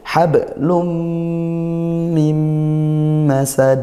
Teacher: Tanwinnya tidak dibaca. Yang awalnya hablun, dia bacanya lum, masuk ke mim. Itulah idgham. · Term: idgham bi gunnah